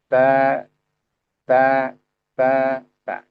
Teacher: Ujung lidah dengan pangkal gigi seri atas. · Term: huruf ta